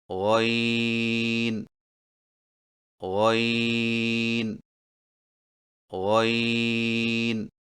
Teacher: غین کی ادائیگی میں زبان کی جڑ کو تالو کی طرف بلند کرتے ہوئے موٹی آواز میں پڑھیں